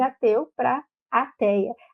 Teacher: quando a gente faz essa pronúncia desse E aberto, a gente acaba tendo também mais um movimento, mais uma alteração, que é a ditongação. Então, a gente sai do E para o EIA, então de ateu para ateia.